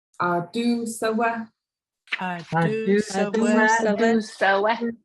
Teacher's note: The ah and oo are long, and then the sa and wa are short.